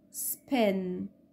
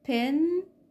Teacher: ال unaspirated مش بيخرج هوا زي الاسبيريتد